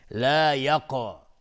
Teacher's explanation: قاف قلقله میخواد چون ساکنه.